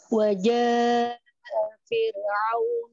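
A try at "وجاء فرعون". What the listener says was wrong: Kurang panjang matnya. 4 harokat. Wajah Fir'aun.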